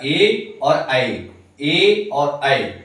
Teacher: कंठ को और तालु को दोनों को मिलाकर जो वर्ण उच्चारित होते हैं वो है आपका ए और ऐ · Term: कंठ तालु